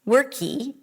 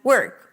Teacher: adding a vowel at the end of words that end with a consonant. For example, worky instead of work or Skypy instead of Skype.